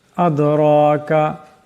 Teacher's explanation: দাল সাকিন, দাল কলকলা হরফ আওয়াজটা টক্কর খাবে। রা, এখানে রার উপর খারা জবর আছে, রাকে মোটা আওয়াজে পড়তে হবে।